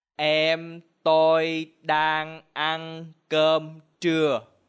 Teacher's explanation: All of these words have mid-level tone.